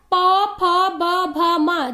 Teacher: प वर्ग, जब हम लोग प वर्ग का उच्चारण करते हैं तो यह हमारे होंठ से टकराता है, अर्थात प फ ब भ म। जब हम लोग इसका उच्चारण करते हैं तो हमारा दोनों होंठ आपस में एक दूसरे से टकराता है, इसलिए इसे होष्ट ध्वनि या होंठ ध्वनि कहा जाता है।